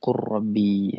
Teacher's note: Leburkan huruf lam sukun. ketika menghadapi huruf ro